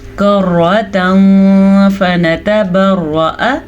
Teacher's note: کرتا فنتبرأ، تنوین کے بعد فا حروف اخفا میں سے آیا ہوا ہے تو تنوین کی آواز کو ہم چھپا کے پڑھیں گے، غنّے کے ساتھ پڑھیں گے. اسے کہتے ہیں اخفا.